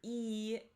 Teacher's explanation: for e, it's high in the front of your mouth.